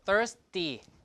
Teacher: So this is unaspirated because there's an S here you can predict, right?